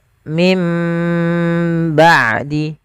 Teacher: kita tahan suara mimnya dengan sepanjang 2 harokat. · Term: iqlab